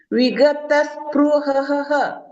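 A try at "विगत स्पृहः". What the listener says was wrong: ಸ್ಪ್ರ ಅಲ್ಲ ಅಲ್ಲ ಸ್ಪ್ರೂ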